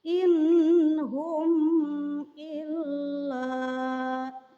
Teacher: disana terdapat nun sukun menghadapi H maka nun sukun tersebut juga harus dibaca jelas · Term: idhar